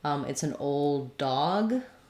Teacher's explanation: If I'm saying it's an old dog, I don't really have to do two Ds, old dog. I just can use a stop D and release on the second D.